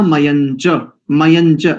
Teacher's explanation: या के ऊपर जो अनुस्वार है ना अंक बिंदु, उसको मां उच्चारण नहीं करेंगे , अशुद्ध है। हम मंत्र पाठ कर रहे हैं, ऋचा पाठ